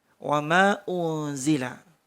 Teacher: Ketika nun sukun ketemu za didengung 3 ketukan.